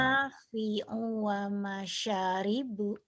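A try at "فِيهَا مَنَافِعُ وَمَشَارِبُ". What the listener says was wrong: Sa-nya panjang. Belum, kurang itu. U-nya pendek.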